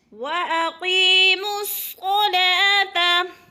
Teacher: صاد پر حروف میں سے ہے، پر کر کے پڑھیں گے